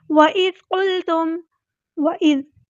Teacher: ہم نے حمزہ کو واضح ادا کرنا ہے، ذال کو نرمی سے ادا کرنا ہے، ہلانا نہیں ہے۔